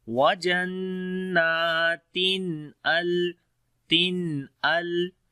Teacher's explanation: After the tanween the next letter is hamza, so we make izhar here, which is izhar halaki, the clear sound of noon. We say wajannatin al.